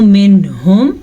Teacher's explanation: نون ساکن کو ہم ظاہر کر کے پڑھیں گے اور بغیر غننے کے پڑھیں گے.